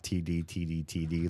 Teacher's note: I won't talk about all the different American English variants on the letter T, but just your standard T and then D, they really only have one big difference, and that is that D has voice, like a voice sound coming up through your larynx, and T, you close it off, but you add a puff of air instead. So you get something through, but it's not quite the same sound because your larynx won't vibrate.